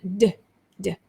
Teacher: But for the d ending, you use your voice to say that d, d, right? So d ending is used when the word ends in a vowel or other voiced sounds, other voiced sounds.